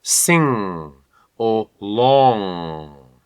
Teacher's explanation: It's quite wide open, but still, the air is traveling through my nose. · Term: NG spelling